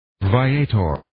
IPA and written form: vaɪ'eɪtɝr (Viator)